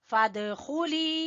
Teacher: دال کے اوپر قلقلہ اور لی کو کھینچیں گے یا مدہ کی وجہ سے